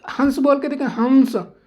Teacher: हंस बोलेंगे तो नाक पे पहले जोर जाएगा, उसके बाद मुंह से हंसा की आवाज़ पे के साथ हवा निकलेगी, हंस, ठीक है, इतनी बात समझ आई। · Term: अनुनासिक